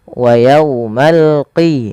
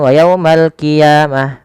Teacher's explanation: Jangan wa yaumal qiyamah, nanti jadi huruf kaf. Dia adalah huruf qaf ya, lebih tebal hurufnya dan dia sifatnya sifat isti'la, pangkal lidahnya terangkat.